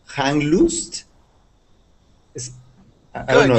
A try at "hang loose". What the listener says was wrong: the word is hang loose just with that s sound no sound afterwards